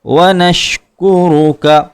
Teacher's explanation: را کے اوپر پیش ہے، را کو پر کریں گے ، وَلَا نَكْفُرُكَ اسی طرح یہاں بھی را کو پر کیا